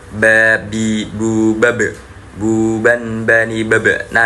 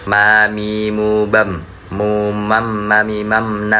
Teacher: Nah, kalau yang ini itu syafeten menggunakan dua dua bibir. Jadi makhrajnya ada di antara dua bibir yaitu atas dan bawah